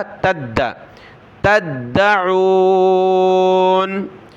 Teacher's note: کنتم به تا کو دال کے ساتھ ملایا، دال کو سخت کیا تشدید کی وجہ سے